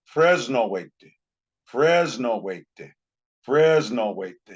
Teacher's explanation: when we Paiuticize English words, they will all be made to end in an ah sound. They have to end in some kind of a vowel sound. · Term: Paiuticizing